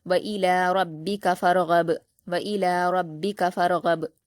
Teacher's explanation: ہے، را پر جزم ہے، فا کو را سے ملائیں گے، را ساکن کو پر پڑھیں گے کیونکہ اس سے پہلے فا پر زبر ہے